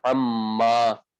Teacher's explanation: اب جب دو ایک جیسے حرف جمع ہو گئے تو میم کا میم میں ادغام کر دیا، تو یہ ہو گیا عما، عن ما سے یہ عما ہو گیا۔